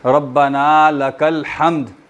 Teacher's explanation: میم ساکن اور دال بھی ساکن, اور دال پہ تھوڑا بہت ہلکا سا کلکلا ظاہر کر دیا جائے